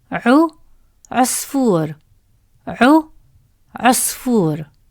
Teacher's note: Round your lips to make the short عو sound.